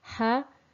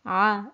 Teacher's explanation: So they both have the same articulation point, therefore they have to be differentiated in their characteristics. So the letter Ha is slightly further up compared to the Ayn.